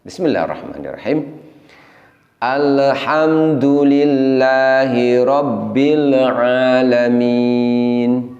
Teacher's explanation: disitu ada bunyi pantulan pada huruf lam sukun semestinya lam sukun tidak boleh ada bunyi pantulannya karena lampu kan